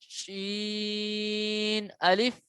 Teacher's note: شین جو ہے یہ منہ میں پھیل کے آواز نکلے گی